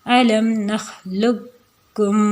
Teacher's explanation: قاف کو کاف میں مدغم کر کے قاف کو نہیں پڑھیں گے اور ڈائریکٹ سمپل والے کاف کے ساتھ پڑھ دیں گے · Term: تام